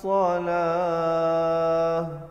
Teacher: Kalau berhenti di situ tu ta marbutah ditukar kepada ha.